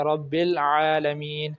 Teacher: عین کہاں سے ادا ہوتا ہے؟ وسط حلق سے، حلق کے درمیانہ حصے سے، اگر ہم اس کو حلق کے درمیانی حصے سے ہی ادا کریں تو پھر اس کی ادائیگی درست ہوگی، جہاں کہیں بھی جس لفظ کے اندر بھی عین آئے گا اس کی ادائیگی درست ہوگی۔